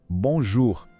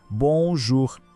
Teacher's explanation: Aqui a gente tem a vogal nasal ON e depois o som do OU, que em francês soa como o nosso U.